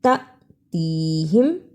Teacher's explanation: یہاں الف کے اوپر جزم ہے اس لیے اس کو تھوڑا جھٹکا لگا کر پڑھتے ہیں